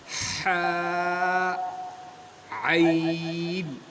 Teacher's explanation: اور پھر ہے حا، عین، وسط الحلق، حلق کا درمیانی حصہ، حلق کا درمیانی حصہ یعنی حلق کے ہمارے گلے کا جو سینٹر ہے وہاں سے نکلتے ہیں حا اور عین